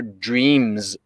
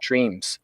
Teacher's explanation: in a german accent usually a german person speaking english there's not as much buzz · it starts with what sounds like a very soft t as opposed to a d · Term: devoiced